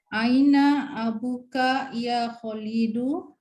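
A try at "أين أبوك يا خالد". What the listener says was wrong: Ya Kholidu, khonya yang panjang.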